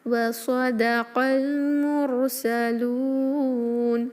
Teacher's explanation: را ساکن بھاری رکھیں کیونکہ اس سے پہلے ضمہ ہے ، لام کو 2 یا 4 یا 6 حرکہ اسٹریچ کریں · قاف کو المرسلون کے لام سے ملائیں